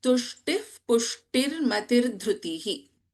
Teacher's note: we do not chant the complete Visarga when we are chanting this verse because we are having Upadhmaniya. We chant this as Tushtif Pushtir Matir Dhritihi.